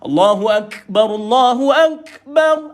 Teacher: ini berhenti kita kena Nyatakan sifat diaitu angin keluar HAM Oke maka kita baca dia dalam keadaan mati k dulu baru angin keluar